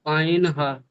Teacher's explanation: হলকের বা কণ্ঠনালীর মাঝখান হইতে উচ্চারিত হয় আইন, হা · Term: মাখরাজ